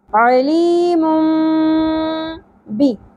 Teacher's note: یہاں پر ہم نے تنوین کی اواز کو میم میں بدلتے ہوئے غنہ کرنا ہے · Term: اقلاب